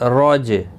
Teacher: جیم ساکن پر قلقلہ ہوگا. عین میم دو پیش عم، با زبر با، رجعم با، عین یا زیر عی، دال دو پیش دن، بعیدن، رجعم بعید، دال ساکن پڑھا جائے گا، قلقلہ بھی ہوگا.